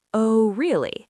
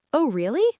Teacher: "Oh, really?" That shuts the conversation down. But if you raise your pitch, stretch the word really out just a little bit, and raise your eyebrows, it instantly sounds warm and inviting. "Oh, really?" Let's practice that together. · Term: rising interested intonation